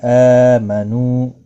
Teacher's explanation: حمزہ کے اوپر کھڑی زبر ہے، 1 الف کے برابر کھینچ کر پڑھیں گے۔